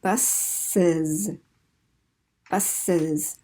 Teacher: we take that S sound and make it voiced, and we add a syllable because it's too hard to put two S's together